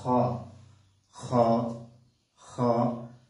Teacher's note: হলকের শেষ ভাগ থেকে এই খ উচ্চারিত হয়। খ খ খ।